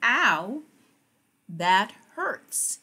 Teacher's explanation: It does not make a long O, it makes the ow sound, and kids love to say that.